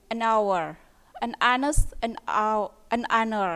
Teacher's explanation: jadi h-nya ini tidak dibaca h tapi dibaca an hour, an honest, an honor ya. Jadi menggunakan awalan an ya.